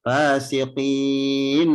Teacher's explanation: Illal fasiqin, alif lam komariya, fa-nya 2 harokat, siqin, mad arid disukun. Dan nunnya dibaca dengan jelas, izhar mutlak, karena tidak boleh ditahan.